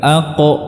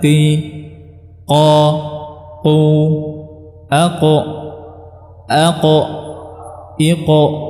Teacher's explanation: Jadi huruf qaf keluarnya dengan melapatkan lidah ke langit-langit. Aqo, merapatkan pangkal lidah ke langit-langit. Dan juga kesalahan juga adalah kita mengeluarkannya dari akar lidah.